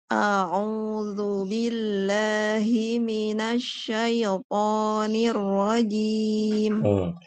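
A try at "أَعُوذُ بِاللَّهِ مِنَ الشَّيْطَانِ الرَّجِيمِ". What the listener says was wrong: Yang pertama, saat baca a'udzu, Ibu kurang monyong. Monyongnya udah monyong tapi kurang. Kayak gini. A'udzu. A'udzu.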